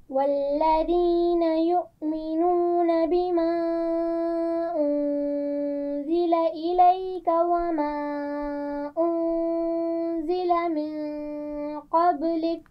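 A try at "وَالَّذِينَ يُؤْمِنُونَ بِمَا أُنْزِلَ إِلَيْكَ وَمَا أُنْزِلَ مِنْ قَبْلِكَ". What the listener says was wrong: پہلے انزلہ پہ آپ نے زا کو واضح نہیں کیا، دوبارہ سے پڑھیے.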